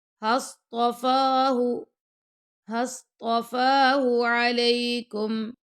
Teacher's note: فا کے اوپر کھڑا زبر ہے تو 2 سیکنڈ تک فا کو لمبا کریں گے